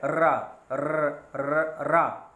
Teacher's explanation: रा जब हम कहेंगे तो ज़बान की नोक आपके दंत मूल पर यानी दांतों की जड़ पर रगड़ती है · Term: वत्स्र वर्ण